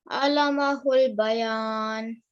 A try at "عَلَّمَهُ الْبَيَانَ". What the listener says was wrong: It's not la, it's allamahul. So it's the ayn that you need to make a bit of a thick sound, and then it's allamahul.